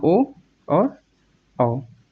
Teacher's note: ये पश्च भाग से बोले जा रहे हैं तो ये पश्च स्वर कहलाएंगे